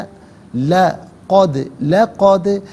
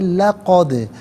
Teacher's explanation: یہاں پر آپ دیکھیں الف مدہ اوپر مد کی علامت، مد متصل ہے، مد واجب بھی کہتے ہیں، منیمم اس کو 3 سے 4 حرکات کی مقدار کھینچ کر پڑھنا ضروری ہے، اور میکسیمم اس کو 5 سے 6 حرکات کی مقدار کھینچ کر پڑھ سکتے ہیں۔ غداءنا لقد دال ساکن ہے لیکن حرف قلقلہ ہے، تو یہاں آواز لوٹتی بھی محسوس ہونی چاہیے